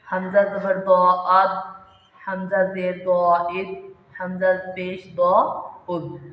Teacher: ضاد کا مخرج میں حفا لسان یعنی زبان کا بغلی کنارہ اوپر کی داڑھوں کی جڑوں کے ساتھ لگتا ہے۔